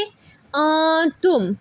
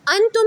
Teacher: आप नाक में थोड़ी देर आवाज को लेकर जाकर रोकते हैं · नाक में आवाज लेकर जाकर पढ़ेंगे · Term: गुन्ना